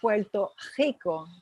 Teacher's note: la vibrante múltiple se pronuncia muy muy atrás